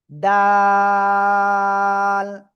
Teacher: জিহ্বার আগা উপরে 2 দাঁতের গোড়ায় লাগান, লাগিয়ে 3 আলিফটা নিয়ে এই অক্ষরটা উচ্চারণ করেন, ডাল।